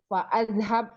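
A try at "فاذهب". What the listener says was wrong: Hamzah wasal dong. Fazhab.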